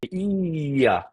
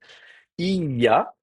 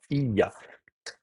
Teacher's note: vous avez la consonne ye qui est elle-même précédée d'un son i. Donc, ça fait ia. Donc, on glisse, vous voyez, il y a la langue qui va comme ça glisser sur le palais. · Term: palatalisation